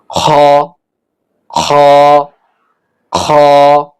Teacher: কণ্ঠনালী গলার শেষ থেকে উচ্চারণ করতে হবে।